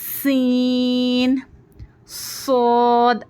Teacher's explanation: हुरूफ सफीरा सफीर भी कहते हैं क्योंकि इनको पढ़ने में सीटी की आवाज आती है